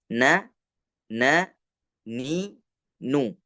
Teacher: saat kita membaca huruf na berharakat itu ujung Lidah Tidak nempel lama di bagian langit-langit atas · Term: makhraj mukammal